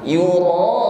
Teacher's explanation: huruf ra di sini kita panjangkan 4 harokat atau 2 kali ayun. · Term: mad wajib muttasil